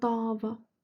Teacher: Əgər biz ona dava deyiriksə, a uzanırsa dava, bu zaman mənası olur savaş